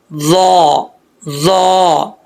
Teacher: زبان کی نوک اوپر والے دانتوں کی جڑوں سے لگے، اوپر والے دانتوں کے اندرونی حصے سے لگے تو یہ ظا پڑھا جائے گا